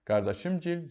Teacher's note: İsim düzəldən gil, ov, ova, yev, yeva şəkilçiləri vurğusuz tələffüz edilir. Qardaşım gil, gil qəbul etmir, düşür əvvələ.